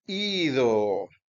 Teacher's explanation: fíjese que hay sonido largo al comienzo y sonido largo al final por la omega